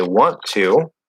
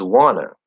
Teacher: if we have n t plus vowel the T will disappear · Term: NT plus vowel linking rule